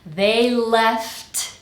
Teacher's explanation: Left, left. And because this T is part of a consonant cluster, it's not a glottal stop, it's a proper T sound